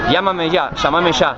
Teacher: nosotros la doble L la pronunciamos ye, y la Y también